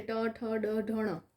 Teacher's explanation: બોલતા જીભ અને મૂર્ધા એટલે મોઢાને સ્પર્શ કરે છે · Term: મૂર્ધન્ય